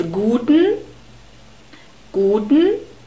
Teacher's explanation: We have a long U sound in guten and an unstressed E in the last syllable. Most of the time we Germans don't speak this unstressed E.